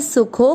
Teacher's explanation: आपको यो की मात्रा को लंबा खींचना, यो, फिर उसके बाद में आधा न, योन त, पूरा त में मिक्स करेंगे, योन त में अ की मात्रा इसलिए विसर्ग को पढ़ेंगे ह, योन त। फिर सुखो, सु की मात्रा छोटी है, सुखो, खो की मात्रा को लंबा खींचेंगे क्योंकि अवग्रह, सुखो, वापस खो के बाद में अवग्रह के बाद में आधा न, सुखोन त में अ मिक्स करेंगे, सुखोन तरा।